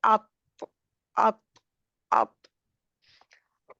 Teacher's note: तौ में ज़ुबान की नोक और सामने के 2 दाँत 2 दाँतों का जो गम लाइन होता है, वहाँ पर लगेगी ना ज़ुबान की नोक